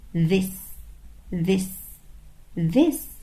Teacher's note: طيب خلطة ال TH بتدينا صوتين في الحقيقة. في صوت voiced، يعني صوت الصوت بتاع ال TH ده لما نحط ايدينا على زورنا كده بنحس ان في vibration، في اهتزاز